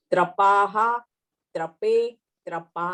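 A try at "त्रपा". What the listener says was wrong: Trapa, trape, not trapaha. Trapa, trape, trapaha.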